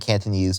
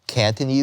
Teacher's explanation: with A raising it sounds like Cantonese, without it sound like Cantonese with a more like open vowel